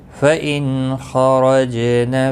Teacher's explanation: را زبر کی وجہ سے پر پڑا جائے گا، جیم ساکن پر قلقلہ ہوگا